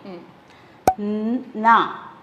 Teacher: அந்த நாவ நுனி நாக்கு கடிச்சு தான் உச்சரிக்கணும்